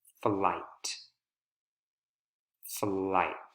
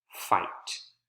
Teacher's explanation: we have a consonant cluster right f and l flight flight here we do not have a consonant cluster there's only one consonant sound that's the f sound